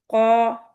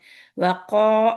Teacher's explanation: قاف کے اندر آپ کو صرف بیک آف دا ٹنگ اوپر اٹھے، اس لیے منہ میں بھرا پن نہیں